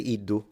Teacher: I wouldn't do the J pronunciation of the D but some people do so it's not incorrect it's once again